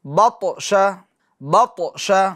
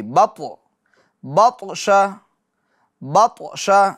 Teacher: बतश, बतश, कलकला भी होगा और पुर भी करना है। ठीक है, बत, आवाज़ लौटेगी, बत, बतश, बतश।